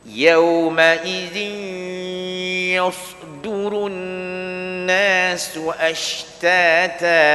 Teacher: Masuk huruf masuk hidung. Masuk huruf ya, tanwin masuk huruf ya, terus masuk hidung.